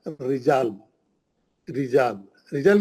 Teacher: रा पे जेर है, पतला पढ़ेंगे, लाजमी बात है, क्योंकि जेर का आवाज नीचे जाता, जेर का आवाज नीचे जाता, नीचे गया तो उठेगा कैसा आवाज?